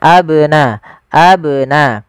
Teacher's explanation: Kemudian pelafal abnaakum ada huruf ba ini bnya berharakat sukun dan dia ba salah satu huruf qalqalah yang di mana dia harus memantul